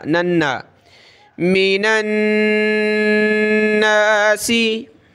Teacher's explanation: नून पर यह तशदीद आ जाए या मीम पर तो हमेशा गुन्ना होगा